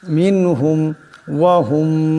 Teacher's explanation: মিনহুম ওয়াহুম এখানে মিম সাকিন, মিম সাকিনের পর মিম আসছে, ঈদগাম হয়ে যাবে, ঈদগামের একালে পরিমাণ গুণা হবে।